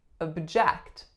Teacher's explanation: in this case our first syllable becomes schwa